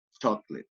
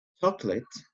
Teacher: will appear to have three syllables but in fact the middle syllable is dropped but you only pronounce the first and the last syllable